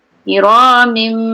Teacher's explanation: Jadi masukkan ke dalam sebutan mim. Kiramim, tanwin tu terus kepada sebutan mim. Okey. Kita tak baca kiramin. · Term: iklab